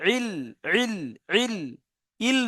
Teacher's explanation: গলার মাঝখান কণ্ঠনালী হালাকের বা কণ্ঠনালীর মাঝখান দিয়ে উচ্চারিত হয়। আইন হা আইন হা, তাই ওখান দিয়ে আনতে হবে ইল ইল।